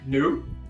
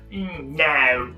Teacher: un australien va faire no, tu vois. C'est très, ça part un peu dans le grave